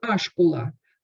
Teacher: То есть появляется гласный в начале.